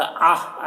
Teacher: आइन को हलक से अदा करेंगे